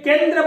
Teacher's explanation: केंद्र में नाक से वायु बाहर नहीं निकलती बल्कि हमारे केवल मुंह से निकलती है। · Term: अनुस्वार